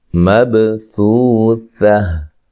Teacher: یعنی کہ تشدید ہے، بی یو، بی یو۔ اچھا جی، مبثوثہ، با کو ہلا کے پڑھنا ہے، با قلقلہ ہے